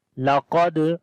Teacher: لقد, now we do not long, qaf we read in heavy sound as this is isti'la letter. Dal, on the dal we make qalqala.